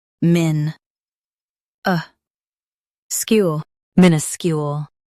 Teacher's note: Stress min and soften uh skewl.